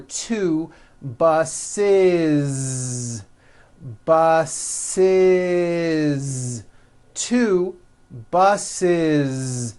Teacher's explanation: the last sound you hear is that voiced Z